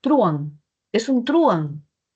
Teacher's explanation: si la mayor fuerza de voz no estuviera en la A, sino en la U, sería truán